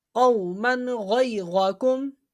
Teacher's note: غین حرف حلقی میں سے ہے، تو یہاں پر اظہار ہوگا یعنی غنہ نہیں کریں گے. قاف واو زبر قو میم دو زبر من قومن غین یا زبر غی قومن غی غا زبر غا قومن غی غا کاف میم پیش کم قومن غی غاکم یہ غا موٹا پڑ جائے گا.